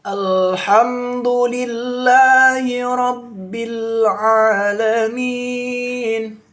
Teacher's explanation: Lam sukun ini termasuk hukum bacaan rokhawah ya sobat Quran, jangan sampai salah. Lam sukun termasuk hukum bacaan rokhawah yang dialirkan membacanya. Jangan sampai dipantulkan membacanya ya.